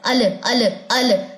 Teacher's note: सबसे बड़ी गलती क्या होती है लाम के ऊपर हमसे कलकल हो जाता है हम कैसे पढ़ते हैं अल अल अल जबकि ये इसका मखर